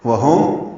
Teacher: وہم میم ساکن پہ اظہار ہے، ہا اقصی حرف سے نکالیں گے